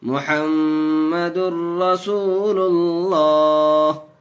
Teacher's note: یہاں 2 پیش تنوین کے بعد ادغام یرملون کے 6 حرفوں میں سے را آیا اور را کی صورت میں بغیر گنہ کے پڑھتے ہیں۔